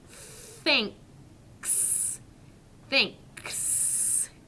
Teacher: our tongue goes between our teeth. And we end with a k and s sound.